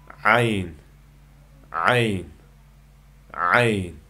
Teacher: Kanayning o'ttir qismidan chiqadi. Talaffuz qilganda bo'g'zimizdan kelgan havo oqimi his qilinadi. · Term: Jarangliq uzuk tovush